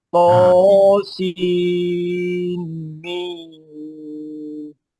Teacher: di antara nun dengan mim ada dengung